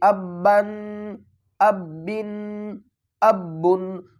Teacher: تنوین کے اوپر ہم گنہ بھی کریں گے